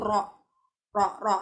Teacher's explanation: kalau ngomong ro itu pas banget di ujung lidah.